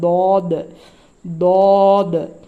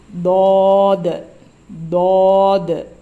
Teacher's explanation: ஒரு நாக்குடைய ரெண்டு பகுதி ரெண்டு சைடு இருக்குல்ல ஓரங்கள் அது அதனுடைய மேல் பகுதியை போய் டச் பண்ணுச்சுன்னா இந்த தா தா ஆன்னு வரும்